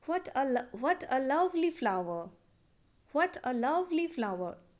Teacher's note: Suppose, if we say, what a lovely flower, what a lovely flower, we are giving stress on the syllable love, lovely, right? So we are giving stress on the syllable love here, but we are using falling tone in this sentence